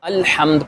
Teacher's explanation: ہم نے جب الحمد پڑھا اس وقت ہم نے لام کو ظاہر کر کے پڑھا